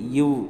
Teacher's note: மேல்வாய் பல்லை கீழ் உதடு பொருந்துவதால் பிறக்கும் எழுத்து